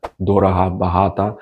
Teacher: in the south, they might have softer G sound